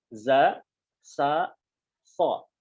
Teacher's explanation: ujung lidah menempel pada ujung gigi seri bagian bawah